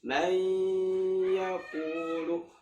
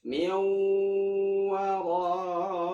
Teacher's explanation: Jadi idgham bi gunnah waw dan ya ini masih ada rongga di hidung ya, tidak sesempurna nun dan mim ya.